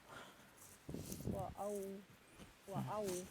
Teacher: hamzanya jangan mengarah ke ain, jangan wa aufu tapi wa au. Pakai tenggorokan bawah.